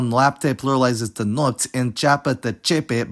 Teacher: the internal opening diphthongs of [e̯a] and [o̯a] often disappear or reappear in plural forms